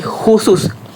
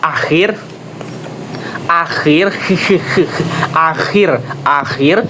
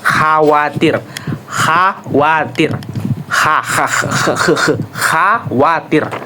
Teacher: Nah, saat ada sedikit cela, gesekan, udara keluar. Bunyi gesekan dari belakang tenggorokan